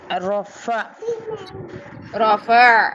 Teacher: جھٹکا تو نہیں دینا، جھٹکا تو ہم نے حمزہ میں دینا، عین میں تو نہیں جھٹکا دینا